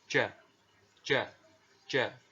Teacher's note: seperti ini Hai dengan fathah dibaca aja huruf j ini ya dikeluarkan dengan menyentuhkan tengah-tengah lidah dengan langit-langit · sifat yang dimiliki oleh huruf ja ini adalah tidak boleh mengalir nafas ya, atau disebut dengan al-jahr ya.